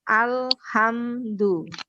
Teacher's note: Yang tersekat itu namanya syiddah. Nah, kita baca agak ditahan. Alhamdu, begitu.